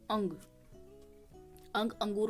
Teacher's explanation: इसके उच्चारण में नाक से अधिक सांस व मुख से कम सास निकलती है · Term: अनुस्वार